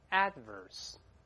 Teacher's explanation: ▁dangerous▁mistake，▁我觉得必须要指出啊，你现在正在犯一个危险的错误，没有人强迫我，但我看你犯错怎么能不管呢，我良心不安，内心的动力。好，这是我们看到propulsion▁相关的▁propel▁含义以及同根词放在一块把它记住就好了。这个词跟老师看到这儿。好，下面我们再看一个比较复杂的词，叫不利的或者相反的。跟老师大声再读一遍▁，adverse。adverse，▁读快之后那个的几乎听不到了，因为的是爆破音，爆破音后面出现其他辅音，加▁an，▁ 舌尖点住，憋口气再发那个▁ver，▁注意▁v▁上牙触下唇 ，在里面▁，adverse。哎，那个的几乎听不到了，但得做这个动作，停一下再发▁verse，▁对吧？叫不利的或者相反的，我们看一些例子呗，用在什么场合呢？比如说▁adverse▁effects，▁表示不利的影响，消极的不好的影响，对吧▁？Adverse▁weather▁conditions，▁不利的天气